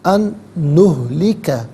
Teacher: ان میں نون ساکن ہے، اسے نہلکہ کے نون کے ساتھ ملائیں گے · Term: غنے کے ساتھ